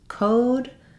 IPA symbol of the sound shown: oʊ